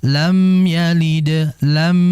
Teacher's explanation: Tetap mimnya dibaca dengan gunnah yang tidak sempurna ya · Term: izhar syafawi